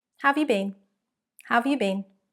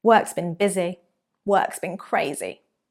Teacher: Pay attention to the pronunciation of been or been in some of these sentences. When it comes at the end, it will be stronger. When it comes in the middle, it's a weak form.